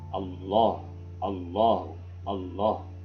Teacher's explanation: Allah, mufakham, tebalkan lamnya itu ya